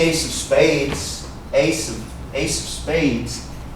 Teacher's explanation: this F actually sounds like a V